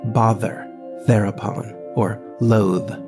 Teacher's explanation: a voiced th as in bother there upon or loathe